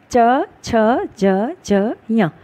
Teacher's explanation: तो हवा का प्रेशर इन वर्णों को बोलते वक्त तालु में लगता है। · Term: तालव्य व्यंजन